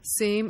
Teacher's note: So inner will be yinner, above will be, open will be wopen. Similarly, the sibilants in same and shame are pronounced the same way with a sa sound.